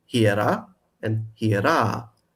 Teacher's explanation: They're pronounced the same today, but the feminine one had a long a at the end. So it's hiera and hiera with a long a at the end.